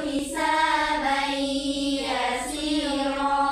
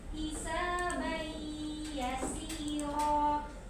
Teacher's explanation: Baik, itu idgham fi gunnah. Kamu memasukkan tanwinnya ke huruf ya.